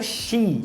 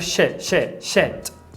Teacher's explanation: Seu desafio aqui para falar esse palavrão é você não prolongar a vogal. Então eu não quero she, eu quero shit.